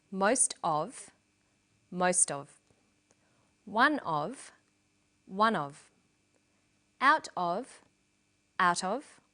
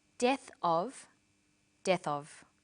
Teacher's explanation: Notice that of in these phrases is unstressed.